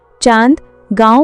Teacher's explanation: अनुस्वार के विपरीत अनुनासिक चांद गांव का उच्चारण नाक और मुंह दोनों से होता है।